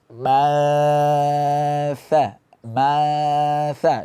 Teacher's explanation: suara mengalir ke hidung berbarengan dengan itu juga ada dari mulut pembuktiannya adalah ketika kita tutup hidung suara tetap keluar dari mulut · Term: Ikfa